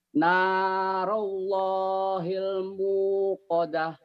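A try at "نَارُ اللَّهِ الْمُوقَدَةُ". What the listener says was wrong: jangan narallah, ru ini ru domah ya Pak ya. Narullahil muqadah. Ingat ya kalau lagu teorinya kan cuma satu alif, dua ketukan. Tapi dari lagu tambahin biar manis Pak.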